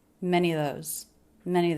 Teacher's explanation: just the schwall linking into the end of the word many of those here and that reduction links many to the